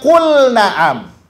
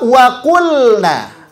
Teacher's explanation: lam sukunnya mesti dibaca jelas, tidak boleh diidghamkan. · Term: izhar